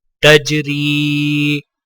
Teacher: را کو یا کے ساتھ ملاتے ہوئے ایک الف کی مقدار کھینچ کر پڑھا جائے گا، اور وقف کرنے کی حالت میں بھی را کو یا کے ساتھ ملاتے ہوئے ایک الف کی مقدار کھینچ کر وقف کیا جائے گا. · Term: یائلین